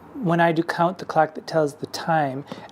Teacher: all rhyme with the long I sound which is a very light sounding sound